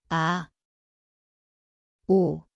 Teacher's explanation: Ang lugar ay ang lalamunan, tahimik na simula.